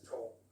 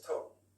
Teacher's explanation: The feature we were looking at there was the L sound at the end. So in RP with tall, you use the dark L, right? So it's tall.